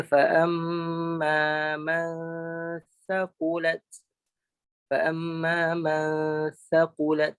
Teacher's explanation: Ikhfa ni maksudnya sembunyi. Kita sembunyikan huruf nun atau tanwin yang ada pada nun atau pada gunnah yang ada pada nun dan juga tanwin tadi ke dalam huruf sa. Ni nun mati bertemu sa.